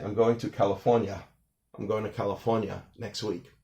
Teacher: Some words that New Yorkers drop the r sound in the middle such as arm or California